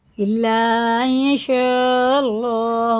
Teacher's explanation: نون یا زبر این، ان نہیں پڑھیں گے، ان یشاء اللہ، اللہ کا لام زبر کے ساتھ ہے تو پورا ہوگا، یعنی منہ بھر کے موٹا کر کے پڑھیں گے